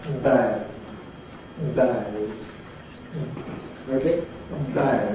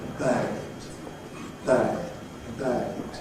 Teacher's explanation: in English we don't have voicing at the very beginning of the the sound for example the b in bad